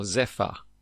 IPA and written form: ˈzɛfə (Zephyr)